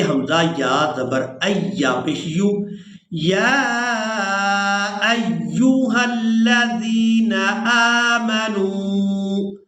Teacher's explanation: یا ایہا الذین آمنوا، یا کو کھڑی زبر اور مد کی وجہ سے کھینچ کر ادا کریں گے۔ حمزہ کو یا مشدد کے ساتھ ملائیں گے تو سختی کے ساتھ ادا کریں گے